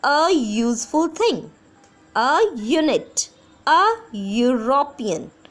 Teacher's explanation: जब आप बोल के देखोगे तो हमारी जो फर्स्ट साउंड है वो यो की आ रही है